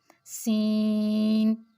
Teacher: सीन को भी अदा करें तो आप सीटी की आवाज पैदा होती है